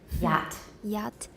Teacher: The front of the tongue is raised toward the palatal area of the roof of the mouth, but it does not come close enough for a fricative sound to be produced. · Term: approximant